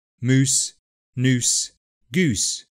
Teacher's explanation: which are all pronounced with a reduced /uː/ followed by /s/